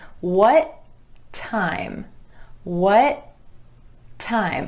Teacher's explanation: I'm holding that tongue up in the position for the final T and just releasing it into the beginning T at the next word.